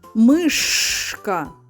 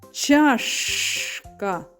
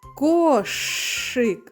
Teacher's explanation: звук ш - твердий, приголосний, глухий звук